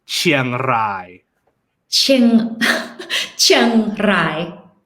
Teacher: So a fun sound that Thai people have for R's is we roll our R's. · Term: rolled R